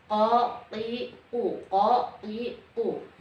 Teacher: tidak ada pantulan, tapi betul-betul berada di dalam pangkal lisan, tapi bukan di tenggorokan, di pangkal lisan bagian dalam.